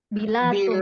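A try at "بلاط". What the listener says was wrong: Bilat itu pakai tok ya, bukan dal. Dal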